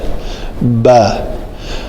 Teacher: شفتین جو ہیں خشک حصے آپس میں ملیں, تر حصے ملیں تو با ادا ہوتا ہے, با. خشک ملیں تو میم.